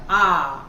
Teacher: और आ में देखो पूरा खुल जाएगा, आ, तो इसमें वृत्त नहीं बनता है। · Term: अवृत्तामुखी